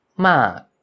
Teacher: the falling tone on a dead syllable only occurs when the low class consonant has a long vowel as in ma